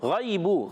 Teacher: غین حرف مستعلیہ میں سے حلق کے اوپر والے حصے سے ادا ہوتا ہے. غین یا زبر، غی یا ساکن سے پہلے زبر یا لین ہے، نرمی سے ادا کریں گے. · غین یا زبر، غی یا ساکن سے پہلے زبر یا لین ہے، نرمی سے ادا کریں گے. با پر پیش آنے کی وجہ سے با جو ہے اس میں بھی ہونٹ گول ہو جائیں گے.